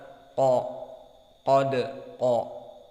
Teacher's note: dibaca dengan tebal dan lisan kita aqsal lisan naik ke atas al-hanak al-lahmi qa, dan mulut kita dipenuhi udara qa, qad qa, qaqiqu aq, qad. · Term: qaf mufakhamah